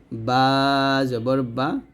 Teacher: বা আমরা দুই ঠোঁট মিল করে উচ্চারণ করব